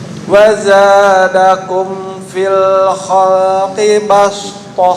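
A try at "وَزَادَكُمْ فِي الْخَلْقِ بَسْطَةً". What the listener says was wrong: Ini sin. Dibaca dengan sin. Bastah. Bukan bastoh, kalau bastoh short. Ini sin ya. Kan atasnya sin.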